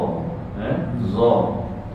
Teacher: Dan makhrajalnya dalam dicantikkan dalam kitab bahagian ujung lidah dikeluarkan sedikit, ditekan secara ringan ke bahagian ujung di atas. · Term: huruf dha